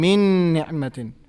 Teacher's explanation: That means noon is getting merged into the next noon. Correct? We are saying min ni'matin. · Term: idgham